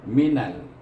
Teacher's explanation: iaitu minal, iaitu digabungkan nun dengan lam yang mati. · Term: izhar qamariyah